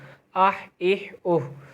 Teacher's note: یہاں پر ہا جو ہے وہ حلق سے نکلے گا، یہ بڑا ہا ہے، بڑا ہا حلق سے نکلتا ہے، اور یہ حرف کلکلہ کا لفظ نہیں ہے تو یہ بھی حرف کلکلہ میں نہیں آتا، تو یہاں پر بھی آواز نہیں لوٹے گی۔